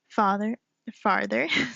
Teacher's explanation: The Southern drawl, the stretching of vowels, the lack of R in words like father, farther.